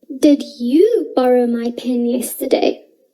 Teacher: now i place the stress on you because i would like to know whether it was you who borrowed my pen · I placed the stress on yesterday because I would like information about the day on which my pen was borrowed. Maybe I am unsure about whether you borrowed it yesterday or the day before, and so I place the stress on yesterday to check.